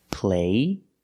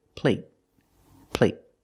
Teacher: There's no stop T. The vowel is longer. · when you have a T at the end, a stop T, it makes a vowel shorter. · But the stop T at the end makes the long A a little shorter.